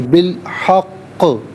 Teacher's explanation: یہاں وقف کریں گے تو بالحق، کیونکہ قاف مشدد بھی ہے، حرف قلقلہ بھی ہے تو جمع بھی ہوگا اور آواز لوٹتی بھی محسوس بھی ہونی چاہیے